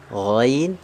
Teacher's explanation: makhrajnya dari adnal halqi ya benar ya adnal halqi itu artinya berarti tenggorokan yang bagian atas